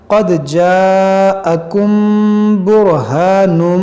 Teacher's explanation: میم ساکن کے بعد با ہے تو یہاں پر اخفاء شفوی کریں گے، یعنی غنہ کریں گے